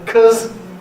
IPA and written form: kəz (because)